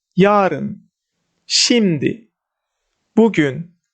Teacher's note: And word stress or syllable stress in time expressions, first syllable is stressed.